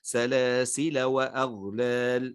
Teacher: أما عند الوصل فوجه واحد فقط وهو الحذف، فتحذف الألف